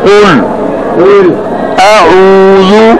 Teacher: آپ نے قاف کو زبان کی جڑ اوپر تالو کی طرف بلند کر کے موٹا پڑھنا ہے